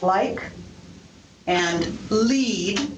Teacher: so-called light or clear or alveolar l which occurs at the beginning of a word